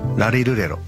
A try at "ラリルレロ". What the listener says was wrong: あ ん た の ラ は な ん て い う の か な 。 舌 を も う 少 し 上 下 し て 。 ラ リ ル レ ロ 。